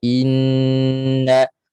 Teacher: rasa makhrajnya, tempat keluarnya, suaranya keluar daripada pangkal hidung. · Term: nun sabdu